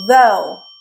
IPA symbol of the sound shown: oʊ